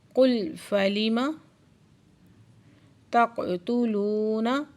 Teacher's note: قاف ساکن ہے، قلقلہ ہو رہا ہے۔ لو پہ واو مدہ، دو حرکت کھینچ کے پڑھیں گے۔